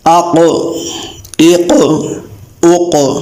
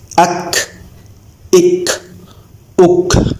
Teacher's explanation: زبان کی جڑ جب تالو کے اس سخت حصے سے ساتھ چپک جائے تو حرف کیف ادا ہوگا، پتلا ادا ہوگا، موٹا ادا نہیں ہوگا۔